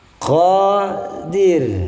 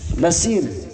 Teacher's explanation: Nah, ini ro-nya tidak boleh dibaca tebal, ya, harus dibaca tipis.